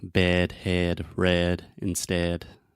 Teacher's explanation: the sound is more closed and more to the center than the a sound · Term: the eh sound